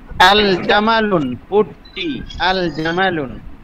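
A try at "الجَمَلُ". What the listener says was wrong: আল জামালুন কেন হবে? এক পেশটা উধাও হয়ে গেছে।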